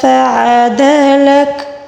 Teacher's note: عین کو حلق کے درمیانی حصے سے ادا کیا جائے گا · لک کاف کے اوپر جو زبر ہے اس کو ہم وقف کے دوران ساکن کے ساتھ تبدیل کر کے پڑھیں گے